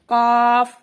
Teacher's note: قاف زبان کی جڑ جب اوپر نرم تالو سے لگے تو قاف ادا ہوتا ہے